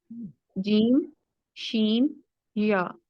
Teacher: جیم، شین اور یا ہے، یہ درمیان والی زبان سے ادا ہوتے ہیں. یعنی آپ کو خود فیل ہوگا کہ جیم، شین، یا بولتے وقت آپ کی زبان جو ہے وہ فلیٹ رہتی ہے. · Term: شجر اللسان